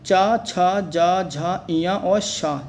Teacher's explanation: च छ ज झ य और श जो जो होते हैं ये तालू के होते हैं